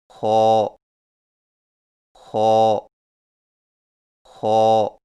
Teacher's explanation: خو کی ادائیگی میں زبان کی جڑ کو تالو کی طرف بلند کرتے ہوئے موٹی آواز میں پڑھیں، یعنی خو خو خو.